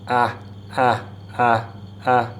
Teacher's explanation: so you have a glottal stop for the hamza. So you get ah, and ain is a little bit more like yeah.